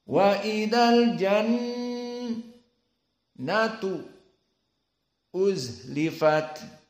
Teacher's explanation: Nun dalam keadaan musyaddadah wujubul gunah